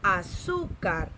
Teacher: La sílaba tónica es su.